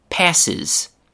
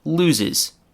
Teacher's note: When a regular verb ends with one of those sounds, the final e s ending is not pronounced s and it's not pronounced z. It's instead pronounced is. That's a complete new syllable.